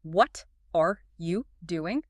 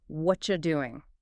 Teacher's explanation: It becomes one continuous sound. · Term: linking